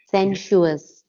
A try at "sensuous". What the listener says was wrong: Yeah, you have to get the U in there. You got it.